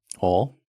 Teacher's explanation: instead of oil they get rid of the I sound they just say o